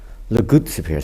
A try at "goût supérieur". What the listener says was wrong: You don't pronounce the T. It's Goo.